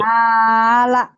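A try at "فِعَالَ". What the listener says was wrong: Panjang ya. Pendeknya fi-nya dong.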